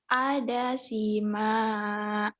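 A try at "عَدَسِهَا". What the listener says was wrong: Ada siha, bukan ada sima. Ada siha itu ha. Kalau ma itu jalannya cuma satu gitu tuh. Ini kan dua. Ini dua kali ke bawah, ke atas tuh gitu ha. Ada siha.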